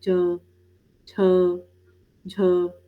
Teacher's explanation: पर अगर आप ध्यान से देखें तो अगर आप च बोलें, छ बोलें, झ बोलें, तो आपको बहुत शांति में अगर आप इन चीज़ों को बोल के देखें तो आपको ये चीज़ महसूस होगा कि आपको हवा जो है वो आपके गम्स ऊपर के जो मसूड़े हैं ना उसको भी टच करके निकलती है